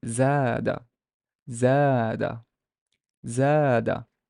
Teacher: ze has no haraka, but there's an alif, so we know that this is a long vowel ah sound. So the d has a fatha or has an ah sound, so it's zada, zada, zada.